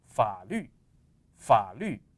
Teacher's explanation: But when a third tone is followed by other tones, saying first, second, and last tone, you will pronounce the third tone just halfway. So you will stop at the lowest point, you will stop at the bottom